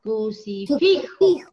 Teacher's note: La sílaba tónica está en fi.